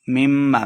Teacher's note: میم شدد ہے تو غنہ ہے، غنہ کر کے پڑھیں گے